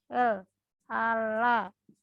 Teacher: Fonem L ini cara artikulasinya disebut aproksiman lateral. Nah, cara pengartikulasiannya alveolar juga karena dia memakai ujung lidah